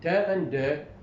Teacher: And in te and de, the tip of the tongue touches the alveolar ridge.